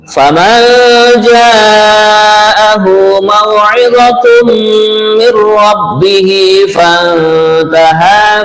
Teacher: fantaha nun mati bertemu ta ikhfa juga ya